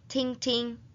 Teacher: When doubling a one-syllable verb, pronounce the second syllable with a neutral tone.